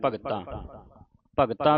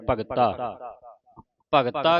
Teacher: ਭਗਤਾਂ ਬਿੰਦੀ ਲਾ ਕੇ ਉਚਾਰਨ ਨਹੀਂ ਕਰਨਾ ਬਿੰਦੀ ਤੋਂ ਰਹਿਤ ਪੜਨਾ